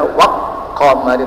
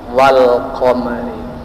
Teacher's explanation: alif lam setelahnya ada qaf, maka dibaca tidak boleh dibaca waq qamari tapi wal qamari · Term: izhar qamariyah